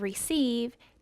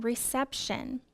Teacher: Also, the vowel sound changes. The long E sound of receive changes to a short E in reception.